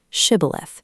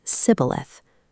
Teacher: While the guards used a soft sh sound, the Ephraimites were physically accustomed to a hard s. They could only say sibboleth.